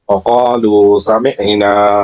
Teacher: আইনটা গলার মাঝখান থেকে আসবে